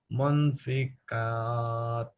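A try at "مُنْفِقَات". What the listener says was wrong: Qaf. Munfiqat.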